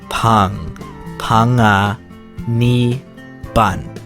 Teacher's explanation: Mấy ông bà phải nối cái âm ng giống như trong từ singER với dongER á